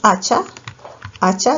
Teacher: ya que la inicial tiene la mayor fuerza de voz